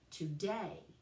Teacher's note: iambic, where the stress is on the last syllable